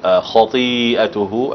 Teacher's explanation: تفخيم الخاء. طبعا الطاء يعني ضعيفة في التفخيم